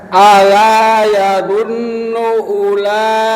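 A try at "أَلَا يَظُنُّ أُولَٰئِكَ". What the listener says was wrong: Tadi dunia Pak, dunia kurang dengung. Sekali lagi i-nya ya, i-nya mesti lemah ya, dengan ulai ya, ulai, jangan sampai ulaika, jangan, itu tashil namanya ya. Kita baca tahqiq ya, jelas ya.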